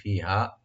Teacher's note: ফি একালিফ টানবেন আর হা একালিফ টানবেন